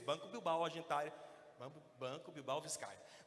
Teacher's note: Era uma letra oclusiva bilabial, problemática para quem tem problema de dicção e gago, como eu. O gago tem dificuldade com esse som.